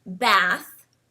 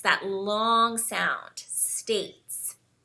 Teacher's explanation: in contrast to a word like bath which uses a short a sound the word States uses a long a sound so we really enunciate that states that long sound States so